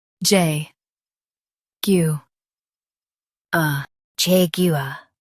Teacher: Jag u a, Jaguar Jag u a, Jaguar In US, stress Jag and say var clearly. In UK, stress Jag and say u softly.